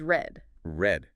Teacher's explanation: You can sort of feel your tongue curling back a bit for that or sound.